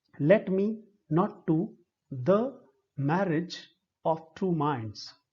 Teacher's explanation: each foot has one unstressed syllable followed by a stressed syllable. So this unstressed stressed is called iambic. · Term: iambic pentameter